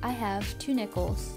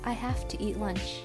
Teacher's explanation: the first use of have ends with a V sound and the second ends with an F sound